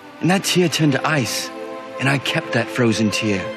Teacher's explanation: You notice the way that he speaks is very round, has very rounded vowels.